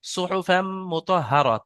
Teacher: মিম মিমের সাথে মিলাতে হবে